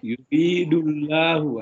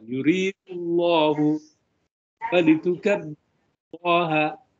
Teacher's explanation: Walitukabbirullah, masih la, tapi harusnya dia lebih tebal. Yuridullahu, jangan takut tebalkan. · lafaz Allah itu kalau diawali dengan dhamma atau diawali dengan fathah harus di tafkim, ditebalkan. Tapi kalau dia membaca itu masih terasa tipis.